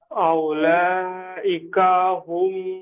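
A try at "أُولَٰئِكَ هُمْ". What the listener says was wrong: দেখেন আউলা পড়বেন না, এখানটায় ওয়াও হামজা পেশ উ হবে, ওয়াওটা বাদ যাবে, ঠিক আছে? এই ওপরে এই সেম এরকম এই ওয়াওটা বাদ যাবে, এই ওয়াওটা পড়া হবে না, এই ওয়াওটাও পড়া হবে না, বুঝতে পেরেছেন? এখানে পড়তে হবে হামজা পেশ উ, লাম খাড়া মাদ যাবার লা, উলা।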